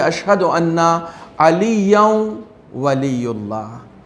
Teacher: وہ نون ساکن ادغام ہو جائے گا اس واو میں، اور واو کے اوپر تشدید دے کے ہم پڑھیں گے